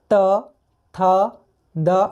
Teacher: तो देखिए तथ दध में क्या है आप जब बोलिएगा तो आपका जीभ आपके दांत को ऊपर वाले दांत को टच करेगा · आप बोल के देखिए मेरे साथ, त थ द, आप देखिए जीभ जो है वो दांत को टच कर रहा है।